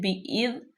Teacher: ذال ساکن ہے، ذال پہ بالکل سیٹی کے آواز نہ آئے